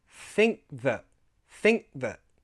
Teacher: I made the a into a schwa sound and the t a glottal sound